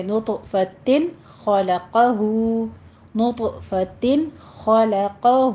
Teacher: اگر آگے آپ وقف کرنا چاہ رہے ہیں گولتا کے اوپر تو کر لیجئے، پھر آپ نے نطفہ پڑھنا ہے، من نطفہ۔ اگر آپ ملا کر پڑھنا چاہیں تو پھر اظہار حلقی کریں گے